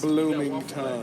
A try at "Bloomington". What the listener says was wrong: It for sure sounded like you said blooming tongue.